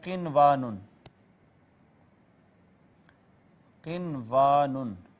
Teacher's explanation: اظہار مطلق ہوگا اور بغیر اخفا کیے نون ساکن کو پڑھیں گے